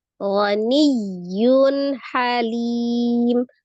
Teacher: Kenapa disebut izharnya halki? Karena ha adalah termasuk salah satu huruf al-halki atau tenggorokan. Tepatnya dari tenggorokan bagian tengah ya. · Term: izhar halqi